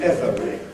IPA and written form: ˈevəri (every)